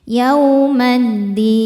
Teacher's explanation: Karena alif lam menghadapi huruf syamsiyah yaitu dal, maka alif lam tidak dibaca masuk langsung ke dal. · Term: alif lam syamsiyah